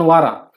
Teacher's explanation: वारा या शब्दाचा शेवट आ या स्वराने होतो आणि हा अंतस्वर पूर्णपणे उच्चारला जातो